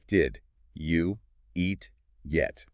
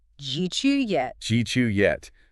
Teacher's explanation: The final id sound in did and the y sound at the beginning of you merge together. They create a brand new J sound. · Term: assimilation